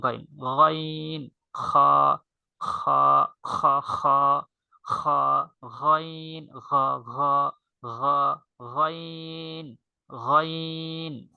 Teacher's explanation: কণ্ঠনালীর শেষ ভাগ থেকে খ এবং গাইন